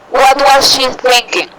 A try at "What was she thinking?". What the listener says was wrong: Yes, it's okay.